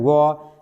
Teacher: व यानी व को उच्चारण करेंगे व, तो जो निचला जो ओठ है वो क्या हो रहा है, दांत की तरफ भींचा चला जाता है, तो व दंत ओष्ठ व्यंजन यानी व कहलाता है।